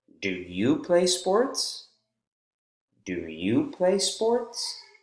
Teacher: do you play sports so again no change in final intonation it's a yes or no question rising intonation at the end